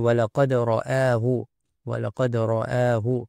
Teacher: Perkataan ra'ahu, ra di sini tebal kerana berbaris fathah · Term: tafkhim